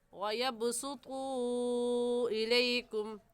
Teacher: منفصل مطلب جدا، یہ حمزہ سے جدا ہے، تو اس مد کو 3 الف کے برابر کھینچیں گے، اس سے کم یا زیادہ نہیں کھینچیں گے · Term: مد منفصل